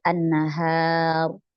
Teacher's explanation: h-nya ini jangan sampai tebal karena rnya Emang tebal dia karena sebelum sebelumnya adalah fathah jangan sampai terikut tebalnya Ro Jadi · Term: huruf H